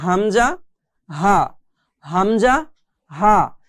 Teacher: একটা হচ্ছে হামজা হা, হামজা হা, একদম শুরু হতে, কণ্ঠনালীর শুরু হতে আমাদেরকে এই দুইটি হরফ উচ্চারণ করতে হবে